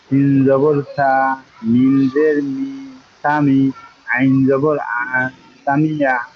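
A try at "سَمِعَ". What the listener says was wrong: জি, সামিয়া।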